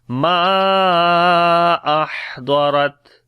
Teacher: On the Ha we read Hams quality again, continuation of our breath. Ahdarat, Dwad and Ra we read in heavy sound, and on this Ta again Shiddat and Hams quality.